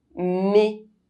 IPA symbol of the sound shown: e